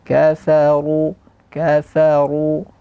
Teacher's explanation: Ronya tebal kaf tipis fa tipis ro tebal